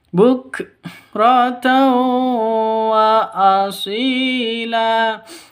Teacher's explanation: Hukum nun mati atau tanwin bertemu dengan wawu, maka cara bacanya masuk ke wau disertai dengung. · Cara bacanya masuk ke waw disertai dengung karena idgham bigunnah. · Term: idgham bighunah